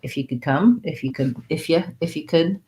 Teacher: then that u becomes a ya the could could becomes kind of reduced a little bit as